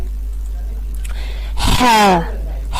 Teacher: ہا کا مخرج ہے وسط حلق، حلق کا درمیان